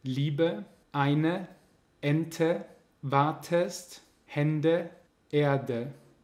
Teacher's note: Das E wird relativ deutlich als schwa ausgesprochen, also als am Ende des Wortes.